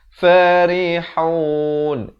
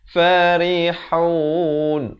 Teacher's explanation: Ri macam tersenyum gitu. Bukan ri itu tebal. Salah. Dia kena baca nipis di sini.